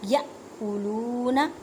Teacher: یا کو جھٹکا دے کے پڑھیں گے کیونکہ حمزہ ساکن ہے